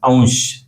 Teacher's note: आपणाला अगोदर त्या स्वराचा उच्चार करतो आणि नंतर या अनुस्वाराचा उच्चार करतो